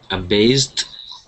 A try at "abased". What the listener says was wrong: that's an SS sound make sure instead of saying aase we say a based aast yeah with the t ending